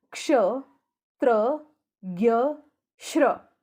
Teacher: श्र में श आधा और र पूरा। · त्र में देखिए त आधा सुनाई दे रहा है और र पूरा सुनाई दे रहा है। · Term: संयुक्त व्यंजन